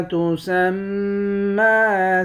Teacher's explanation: میم مشدد پر غنہ کریں گے، اوپر کھڑا زبر ہے، ایک الف کے مقدار کھینچ کر پڑھیں گے۔